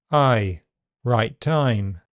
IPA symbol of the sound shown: ʌɪ